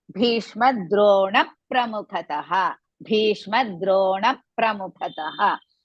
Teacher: So in between Bhishma Drona and Pramukhataha, one small dvitvam of pa should be added. That means immediately after Drona, that pa should be taken.